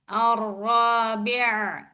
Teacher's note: This ain should pronounce from your middle throat nicely.